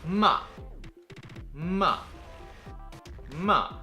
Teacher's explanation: the fourth tone is the most fun just imagine slicing that tone downwards